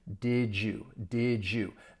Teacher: think of the D and Y. If they were to blend together, you get more of a J sound. It is not something you have to force as you go from one sound to the next. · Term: assimilation